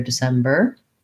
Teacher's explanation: i'm still making my tight american er but i'm not um stressing it i'm not holding it for a long time